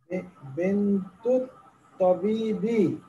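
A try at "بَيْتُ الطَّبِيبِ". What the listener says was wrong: বেন্তুল তাবিবি ওই যে তোয়াটা দিলাম হরফে শামসিয়া কাজে আলিফ লামের উচ্চারণ হবে না বাইতুল তাবিবি বাইতুত তাবিবি ডাক্তার সাহেবের বাড়ি নেক্সট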